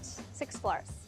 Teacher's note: This clip of Garner saying floors is an example of FOD, where instead of pronouncing the final obstruent as a voiced alveolar fricative z, like floors in American English, she devoices it and instead uses the voiceless alveolar fricative s to say floors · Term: final obstruent devoicing